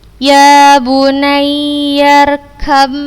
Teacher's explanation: ketika ba sukun bertemu dengan huruf mim yang berharokat, kita bacanya dengan gunnah yang dipanjangkan.